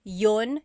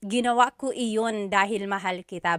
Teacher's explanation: usually the letter I sound is dropped